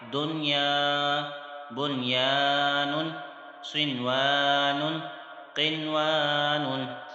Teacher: نون ساکن کے بعد یا یرملون لیٹر ایک ہی کلمے میں یعنی ملا ہوا ہے اس کے ساتھ، اس لیے یہاں ادغام نہیں ہو رہا بلکہ اظہار مطلق ہو رہا ہے، اور غنہ بھی نہیں کرنا